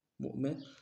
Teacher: جھٹکا دیں گے، حمزہ ہے اور نون میں تنوین غنہ کریں گے